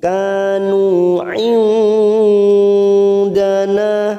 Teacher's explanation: nun sukun bertemu dal namanya bacaan ikfa hakiki, kita samarkan bunyi nun sukun tiga harakat